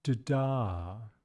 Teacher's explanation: We can really hear that this first syllable is shorter and lower in pitch.